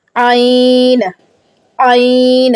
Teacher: جب میرا اب آئین ادا ہوتا ہے تو مجھے پتہ چلتا ہے کہ ٹونسل کے پیچھے سے میرا گلا جو ہے وہ نیچے کو لگ گیا ہے, اور مجھے اندر سے فیل ہوتا ہے کہ میں نے آئین جو پڑھا ہے, آئین, تو وہ آواز آتی ہے جب وہ ٹچ کرتا ہے. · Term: وسط حلق